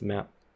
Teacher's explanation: In the word map, we may have a closed P at the end, so we pronounce it just map. So these are all different types of P's, but we still hear it as a P in our head.